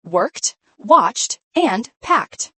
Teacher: The ed in worked is a T sound, not id